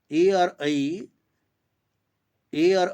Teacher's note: ए और ऐ इन दोनों का क्या हो जाएगा, कंठतालु स्थान है।